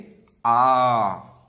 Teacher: विवृत स्वर, इस स्वर के उच्चारण में मुख द्वार पूरा खुला होता है, जैसे आ, है ना।